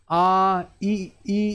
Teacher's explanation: आपके होठ हैं वो गोल नहीं होते। फैल जाते हैं। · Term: अवर्तुलित